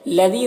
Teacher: لذی دال کو باریک پڑھیں گے، یا مدہ ہے، ایک الف کے برابر کھینچیں گے.